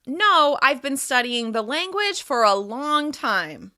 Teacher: By putting extra emphasis on the word long through my voice and a higher pitch, I'm clarifying the duration of time I've been studying Portuguese.